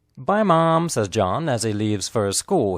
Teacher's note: The stressed words are bye, mom, and John. The unstressed words are says, as, and he.